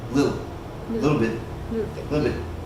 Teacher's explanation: when you say it fast you don't even really pronounce the T sound okay you just hear that l a little a little bit